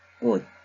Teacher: 치읓도 디귿으로 소리가 납니다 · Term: 음절의 끝소리 규칙